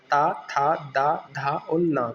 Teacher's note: जब हम ता, थ, द, ध और न बोलते हैं तो हम जो है हमारे ऊपर के जो दांत होते हैं उनसे हमारी जीभ को टकराने पाती जब यह साउंड निकलता है। इसलिए इन्हें दंताय व्यंजन या दंत व्यंजन कहा जाता है।